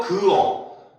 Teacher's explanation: 시읒 탈락은 말 그대로 어간 끝 시읒이 사라져서 소리 나지 않는 겁니다.